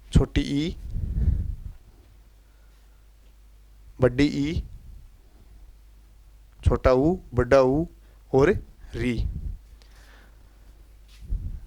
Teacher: संवृत स्वर वे होते हैं जिनको बोलते समय हमारा मुख है वह लगभग बंद की स्थिति में होता है।